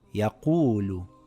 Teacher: It reads yaqulu, lengthening the waw for 2 counts. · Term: long vowels